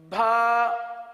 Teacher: भा यानी बा के साथ हा की आवाज निकाली जाती है